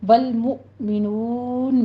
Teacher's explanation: والمؤمنون میں ول کو جھٹکا نہیں دینا، لام کو سٹاپ کرنا ہے، مؤ پہ جھٹکا دینا ہے، نون میں ناک میں آواز نہیں جانی چاہیے، واو مدہ کے بعد ہم وقف کر رہے ہیں تو مدارس وقفی ہے، یہاں 6 کاؤنٹ کرنے ہیں۔